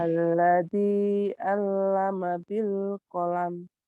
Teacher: Yang double, lamnya double. Tapi maknya dilepas.